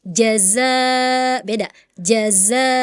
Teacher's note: 'jim' berasal dari tengah lidah, 'zai' berasal dari ujung lidah hingga gigi bawah.